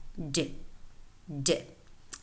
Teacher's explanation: Then the voiced alveolar stop